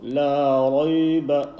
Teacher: the ba with the fatha, you do not stretch